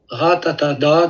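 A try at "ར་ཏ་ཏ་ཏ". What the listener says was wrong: C'est ratatata. C'est un ta. Ratatata. C'est pas un da. Ratatata.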